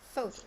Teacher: So here we have the stress in the first syllable